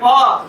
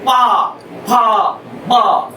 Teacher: कहो कि बोलना है पा तो आपका मुंह बंद होगा, हवा रुकेगी, फिर झटके से बाहर आएगी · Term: बाधित